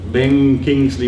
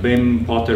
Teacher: Ben would have been read as Ben Thomas with an alveolar nasal, Ben Kingsley with a velar nasal, and Ben Potter with a labial nasal.